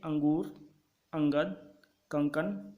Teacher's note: यह स्वर के बाद आने वाला व्यंजन है जिसकी ध्वनि नाक से निकलती है केवल नाक से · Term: अनुस्वार